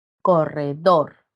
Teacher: Recae en la última sílaba.